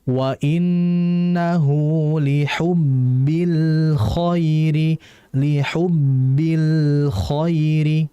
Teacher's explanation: Lam alqamariyah berarti al-nya jelas. Nah, lam memiliki sifat tawassut atau beniah. Maksudnya adalah kita harus mengalirkan el-nya. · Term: tawassuto